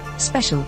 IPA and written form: ˈspɛʃəl (special)